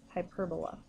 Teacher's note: When you pronounce it, you put the emphasis on the second syllable. And so when you pronounce it, you say hyperbola.